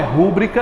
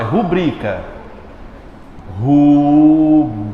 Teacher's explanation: Qual é a mais forte? É o bri. Nada de dizer rúbrica.